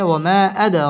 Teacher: বামে হামজা মধ্যে মুনফাসিল তিন আলিফ টেনে পড়তে হবে ওয়ামা আদ দাল কলকলার হরফ ধাক্কা দিয়ে পড়তে হবে